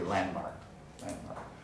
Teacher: Three consonants in a row. The D in the middle of landmark doesn't get pronounced.